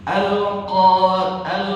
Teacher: Jadi di sini ada ain, au dan enggak pakai suara ini hidung. Jadi ketika mengucapkan huruf ain tidak ada dengung.